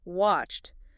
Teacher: With watched, that ed ending actually sounds like a sharp t sound. Watched. Make sure that t is crisp.